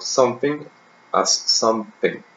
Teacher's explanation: the addition of a P sound after the nasal M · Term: epenthesis